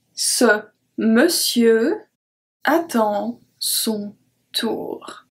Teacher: We don't even pronounce the R at the end. The M-O-N, we pronounce it me, me, cieux.